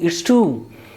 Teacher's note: actual sound is this long vowel sound, oo, it's tomb.